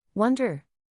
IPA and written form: ˈwʌndər (Wonder)